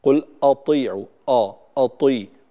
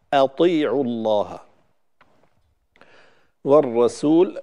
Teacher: الهمزة مرققة ولكن بعدها طاء مفخمة، فالبعض يفخم الهمزة تبعا لتفخيم الطاء فيقول قل أطيعوا، أطي، وهذا خطأ، أطيعوا الله والرسول.